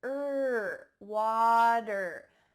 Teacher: include an er at the end of your words er this is really typical in american english